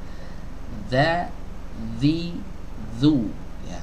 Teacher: Ada gesekan antara ujung lidah dengan ujung gigi seri atas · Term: huruf Zal